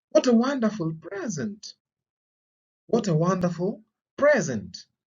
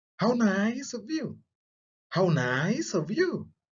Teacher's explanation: falling intonation is also used in exclamatory sentences.